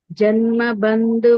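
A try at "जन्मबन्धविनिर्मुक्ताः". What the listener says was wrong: Janma Bandha, not Bandhu. Janma Bandha means attachment. Bandhu means relationship.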